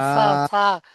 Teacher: সা ওই সামনের উপরে দাঁতের আগার সাথে লাগান। সা আলিফ জাবার সা।